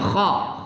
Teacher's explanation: kha pada halqiyah pada tenggorokan bagian depan